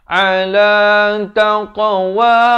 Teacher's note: Bulatkan mulut. Jangan pepeskan jadi taqwa. Tak betul. Dia kena taqwa minallah.